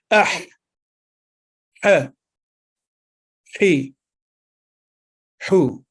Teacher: हा, ये हरूफ हल्किया में से है, यानी हलक से अदा होता है। हलक के दरमियानी हिस्से से यह हर्फ अदा होता है और हल्की हवा मुंह से निकलती महसूस होती है